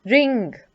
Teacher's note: Okay? So the back part of your tongue, observe where it is when you're saying ng. It is touching the palate. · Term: ng sound